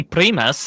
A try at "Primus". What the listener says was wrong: I knew you did it. I knew you rolled the R, you overpronouncer.